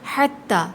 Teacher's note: ہا حلق سے ادا ہوگا، تا پہ سختی کریں گے، تشدید ہے